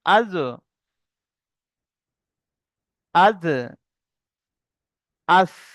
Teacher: জীবের আগা এবং সামনের উপরে দুই দাঁতের আগার সাথে লাগিয়ে উচ্চারিত হয়